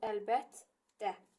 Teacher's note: Tələffüzdə olacaq səkkiz. Qoşa t-larda necə olur? Birinci t olduğu kimi qalır, ikincisi çevrilir cinciltili qarşılığına.